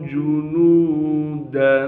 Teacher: नून के बाद वाउ मद्दा होने की वजह से नून को एक अलिफ के मिक़दार खींचेंगे